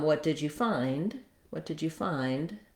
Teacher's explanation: then my d is pretty quiet i am putting it together with the nd sound um so that i can hear that it's not the word